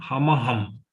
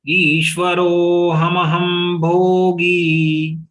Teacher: So once you spell out long ro, then hamaham. First ma is full, second ma is halanta.